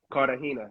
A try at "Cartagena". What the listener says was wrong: Cartagena. You got to roll the R.